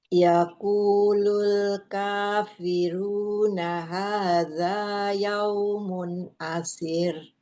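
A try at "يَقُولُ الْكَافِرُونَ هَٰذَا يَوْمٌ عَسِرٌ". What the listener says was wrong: Naam. Yaqulu. Coba qafnya tebalkan lagi.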